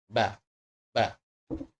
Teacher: dua huruf ba ini tidak mengeluarkan udara